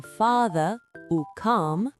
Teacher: Le son A est long et très ouvert